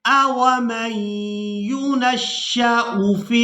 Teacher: اب یہاں پر ہم نے حمزہ کو بغیر کھینچے اور بغیر جھٹکے کے ادا کرنا ہے۔